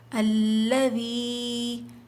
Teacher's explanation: یا ساکن سے پہلے زیر ہو تو یا مدہ ہوتا ہے، 2 کاؤنٹس کھینچیں گے